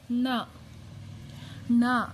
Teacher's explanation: ಇದು ನಾಲಿಗೆ ಮಡಚಿ ಹೇಳ್ತೀವಿ ಣ ಅಂತ ಸೋ ಟ ಬರೀತೀವಲ್ಲ ಅದೇ ತರ ಸ್ವಲ್ಪ ಉಲ್ಟಾ ಬರೀಬೇಕು ಅಷ್ಟೇ ಣ ಇದನ್ನ